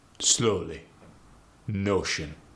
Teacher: the long O sound gets changed to the short staccato O sound.